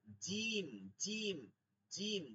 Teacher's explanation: জিহ্বার মধ্যখানটা তালুতে লাগে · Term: শক্ত জিম